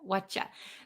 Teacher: the what are you becomes whatcha, whatcha.